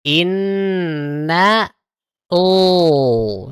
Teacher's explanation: Baru ke lafaz Allah, ketika masuk di lam lafaz Allahnya, tebalkan. Inna, oh. Nah, langsung tebal seperti itu.